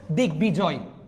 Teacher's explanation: তার মানে কি, আমরা যদি এরা দুইজনের লগে যদি বফলাটাকে দেখি উচ্চারণ করব, সন্ধিজাত শব্দে বফলায় বয়ের উচ্চারণ বজায় থাকবে। যেমন দিগ্বিজয়, এখানে দেখেন সন্ধি বিচ্ছেদ, দিক যুগ বিজয় হয়ে যাবে কি, দিগ্বিজয়, গ হয়ে যাবে।